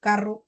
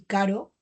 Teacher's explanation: Son vibrantes. Una es múltiple y la otra es simple